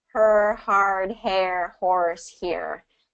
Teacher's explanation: You're going to notice that R kind of pulls back in all of those situations.